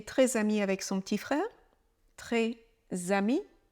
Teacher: le S de la liaison, il se prononce comme s'il était rattaché au deuxième mot